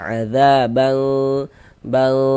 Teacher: Cara membaca e ikhfa hakiki itu dibaca dengan samar. Jadi bunyi nun sukun atau bunyi tanwinnya itu dibaca samar. E disamarkan kemudian dengan dengan kita bersiap-siap untuk masuk ke huruf ikhfanya gitu.